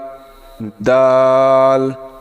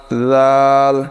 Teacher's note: জিহ্বার আগা সামনের উপরের দাঁতের আগার সঙ্গে লাগিয়ে